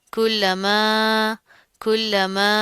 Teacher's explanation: اب یہاں پر کیا ہے، لام کے اوپر تشدید آ رہی ہے، سختی سے جما کر پڑھیں گے، مضبوطی سے، میم کے ساتھ الف آ رہا ہے، اس کے اوپر کیا مد آ رہی ہے، لمبا کر کے کھینچ کر پڑھیں گے